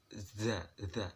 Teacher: untuk the ini adalah lidahnya agak digigit sedikit. The, bukan digigit sih, mepet dengan gigi.